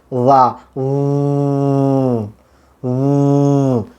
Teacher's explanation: লা উচ্চারণ করার সময় গলায় যদি আমি হাত রাখি তাহলে ভোকাল কার্ডের কম্পন হয়, ভাইব্রেশন হয়, লা ভাইব্রেশন হয়। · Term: ভয়েসড সাউন্ড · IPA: /ð/